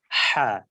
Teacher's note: এই হা টা হলকের মধ্যখান থেকে উচ্চারিত হচ্ছে হা বাতাসটা একটু বের হয়ে যাচ্ছে · আর হলকের মাঝখান থেকে একটু বাতাস বের করতে উচ্চারিত হচ্ছে বড় হা